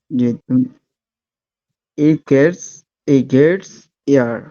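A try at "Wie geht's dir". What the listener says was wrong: না না, ই না তো, ভে না, এটা ভি, ভে ছিল না, ভি গেট এস ডিয়ার, সেখান থেকে ভি গেটস ডিয়ার বলেন।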